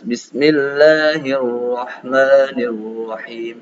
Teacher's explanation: ujung lidah tergetar ketika mengucapkan huruf ro. Tapi getarnya nggak boleh lebih dari sekali. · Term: sifat takrir